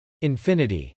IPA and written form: .ɪnfˈɪnɪti (infinity)